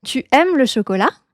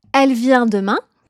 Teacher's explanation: On va monter la voix à la fin de la phrase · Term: intonation